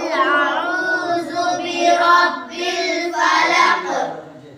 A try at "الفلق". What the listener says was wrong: فلق میں قاف کی آواز آنی چاہیے، فلق، فلق میں دیکھو قاف ہے اور قاف پر وقف کی وجہ سے جزم آ گیا، نہیں؟ جب جزم آ جائے حروف قلقلہ میں سے کسی بھی حرف پر تو وہاں کیا ہوتا ہے؟